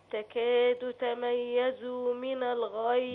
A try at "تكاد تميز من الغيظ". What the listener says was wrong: بالراحة بقى كده. تميز من زمن. يعني ما طولش في الضمة قوي. لا أشبع الضمة. بس ما ينفعش أقول تميز من الغيظ، أو تكاد تميز.